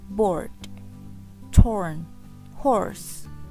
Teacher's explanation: Lanjut di bawahnya ada vowels O for board, torn, horse. Ya, this is the real back vowels and it's close-mid and the lips are strongly rounding. Oh, bener-bener bulat kalau yang ini.